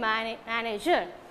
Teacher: the word ends with er then the stress falls on the first syllable